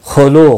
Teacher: خا مستعلیہ ہے، پر پڑا جائے گا